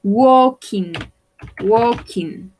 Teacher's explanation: Este verbo se pronuncia de una manera particular. No vamos a pronunciar la L y la A va a sonar como una O.